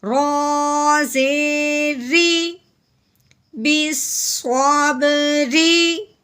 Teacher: صاد با زبر صاب، بالصواب، رو کے نیچے زیر آ گئی ہے، رو کے نیچے زیر آ جائے تو اسے باریک کر کے پڑھتے ہیں